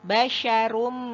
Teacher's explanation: Kemudian depannya ada tanwin. Tanwin berhadapan dengan huruf mim, maka dia idgham bi gunnah. Idgham bi gunnah, gunnahnya pada level yang paling tinggi yaitu gunnah akmal.